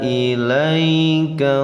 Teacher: Ilaika ini harfulin. Ia sukun sesudah patah, bacanya di ayun saja, tidak boleh dipanjangkan